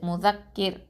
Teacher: தற்கீக்காதான் ஓதணும் அதாவது மெல்லினமாதான் ஓதணும் ரொம்ப வந்து அழுத்தமா நம்ம உச்சரிக்க கூடாது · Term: ரா சுகூனை